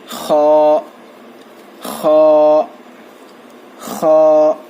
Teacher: خا کو ہم جو ہے تھوڑا کھینچیں گے اور خا کو موٹا پڑھنا چاہیے. اور جب ہم خا پڑھیں گے تو خا کی آواز تھوڑا اوپر کی طرف جائے گی. خا نہیں پڑھنا چاہیے، اسے خا پڑھنا چاہیے.